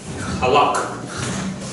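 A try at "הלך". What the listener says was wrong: No, not a hard at the beginning. It's a halak.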